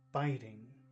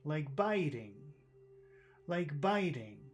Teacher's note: Where's the accent in biting? Biting. First syllable, biting.